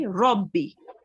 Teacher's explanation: with the ra, when it carries a fatha, you have to round it a bit